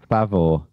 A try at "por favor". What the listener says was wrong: F. Por favor. With an F, not a P.